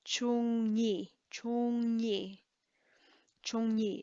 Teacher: So chu and ni, it's much easier in the mouth to go from chu to ni by adding kind of a ng sound in the middle.